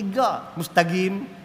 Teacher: dia kena bunyi qaf tu jadi ga